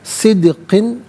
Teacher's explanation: दाल साकिन है लेकिन हरफ कलकला है तो आवाज़ लौटती भी महसूस होनी चाहिए।